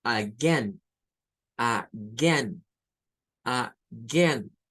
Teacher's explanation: Entonces, estas palabras no comienza con AE, comienza con schwa.